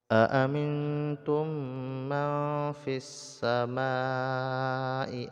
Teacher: beserta didengungkan kemudian mim sukun bertemu dengan mim idgham mimi jadi idghamkan mim ke dalam mim langsung dibaca pada tasdid mim yang kedua dan didengungkan · nun sukun bertemu dengan ta, ikhfa diikhfakan ya, disembunyikan bunyi nun mati dalam huruf ta, beserta didengungkan